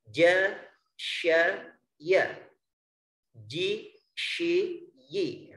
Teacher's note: makhraj yang ketujuh terletak di tengah lidah kita. Di tengah lidah ada 3 huruf, yaitu jim, shin, ya. Jadi makhrajnya atau tempat keluarnya sama.